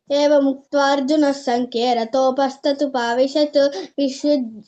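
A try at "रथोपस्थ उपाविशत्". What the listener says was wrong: నువ్వు సెకండ్ పాదం తప్పు చెప్తున్నావ్ ఏంటమ్మా రతోపస్త ఉపావిషత్ అది కాదు రతోపస్త తర్వాత పాసిచ్చి ఉపావిషత్ చెప్పు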